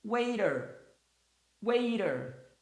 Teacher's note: O T aqui tem som de R porque está entre duas vogais.